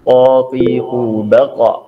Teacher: Jadi lidah bagian pangkal, bagian dalam itu menempel di langit-langit atas dekat dengan anak lidah. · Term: huruf qaf